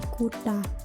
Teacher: penutur Bali biasanya menuturkan fonem T menjadi bunyi apico-alveolar retroflex T